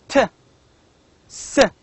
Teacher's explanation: When I say t, s, These two sounds are voiceless. They make no vibration. We do not feel any vibration while pronouncing these two sounds, t, s.